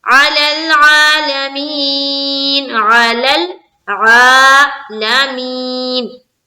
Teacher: यहां पर खींचना है आ में और मी में खींचना है या मद्दा